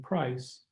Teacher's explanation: the a in face and the i in price are complex long vowels diphthongs